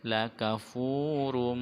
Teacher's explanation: dibaca idgham bi gunnah, memasukkan dengan mendengung